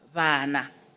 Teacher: it's a fricative we say the lips do not touch they come closer to each other